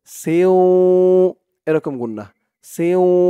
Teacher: এখানে ইদগামে বাগুন্নাহ গুন্নাহ করতে হবে